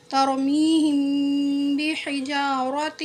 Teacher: ابابیل ترمیہم، یہاں پر غنہ کریں گے کیونکہ یہاں میم ساکن کے بعد با آیا ہوا ہے، میم ساکن کے بعد با آتا ہے تو اس کو غنہ اور اخفا کے ساتھ پڑھتے ہیں۔